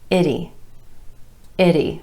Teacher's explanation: We've got the I vowel sound, and then listen closely. That's the letter T, but it's a flap T in American English. It's going to sound like a quick D, followed by the E vowel sound.